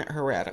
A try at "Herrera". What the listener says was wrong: The H is silent, so it's Herrera.